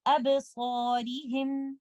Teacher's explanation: letter sad is heavy, so we will recite alif mad heavy. Letter ra has a kasra, so we will recite this letter ra with tarqeeb, and we will recite this word like this.